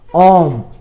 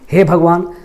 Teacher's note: तो ओम जब बोलते हैं तो बीच में थोड़ा सा हमको खींचना पड़ता है, समय ज़्यादा लगता है। तो ये जो एस के तरह दिख रहा है ना, इसको हम लोग खींचने के लिए, मतलब उसको थोड़ा तानने के लिए करते हैं ओम। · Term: प्लुत स्वर